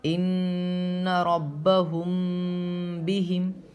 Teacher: Number 2 اخفاء شفوی۔ میم ساکن کے بعد با ہے تو غنہ کے ساتھ اخفاء ہوگا